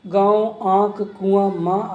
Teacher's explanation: अनुनासिक स्वरों के उच्चारण में मुंह से अधिक, नाक से बहुत कम सांस निकलती है। इन स्वरों पर चंद्र बिंदु का प्रयोग होता है, जो कि शिरोरेखा के ऊपर लगता है, जैसे गांव, आँख, कुआं, माँ आदि।